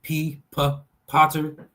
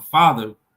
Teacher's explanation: And then the F, the P for Potter is, and then we have the F for father, which is a fricative. So the P explodes, the F does not explode. They're both non-vibrating and they're both labial lip sounds. So the only difference is the plosive and fricative.